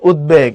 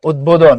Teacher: তো বলছে উদ এই উপসর্গ যুগে যদি কোনো শব্দ গঠিত হয় এবং তার সঙ্গে যদি বফলা যুক্ত হয়, তখন এটার উচ্চারণ অবিকৃত থাকে, অর্থাৎ এটা উচ্চারিত হয়, মানে বফলাকে বদে উচ্চারণ করতে হবে